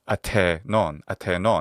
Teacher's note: we have the aspirated stop, theta, which is ta in classical Attic